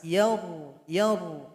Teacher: Yaru, yaru, itu menandakan pangkal lidah sudah naik ke atas, sudah naik ke langit-langit.